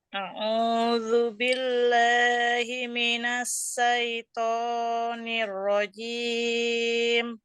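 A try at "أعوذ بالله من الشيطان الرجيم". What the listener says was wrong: Pakainya shin Bu, bukan sin dan cukup 2 harokat ya.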